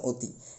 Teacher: এটা কিন্তু সঠিক উচ্চারণ অতি, কারণ অ এর পরবর্তীতে হ্রস্বইকার রয়েছে, তাহলে অ এর উচ্চারণ ও হয়ে গেছে, অর্থাৎ সংবৃত।